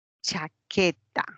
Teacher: Una cha es una palatal. La K es una velar. Y la T, una dental.